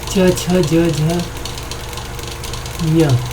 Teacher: च, छ, ज, झ, ञ ताल से उच्चारित होते हैं।